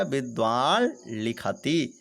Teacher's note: विद्वान धन लिखति, विद्वान प्लस लिखति, विद्वान लिखति का ऐसा संधि विच्छेद करते हैं। अब यहाँ पर जो है नकार क्या है, अनुनासिक है। तो यहाँ पर लकार भी जो होगा वह अनुनासिक वाले हो जाएगा। तो इसका रूप बन जाएगा, द्वा के ऊपर चांद बिंदु आ जाएगा, विद्वान लिखति ऐसा प्रयोग इनका बन जाएगा।